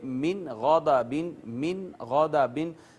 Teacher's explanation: یہاں بھی نون پر ہم آواز چھپائیں گے نہیں، اخفا نہیں کریں گے بلکہ اظہار کریں گے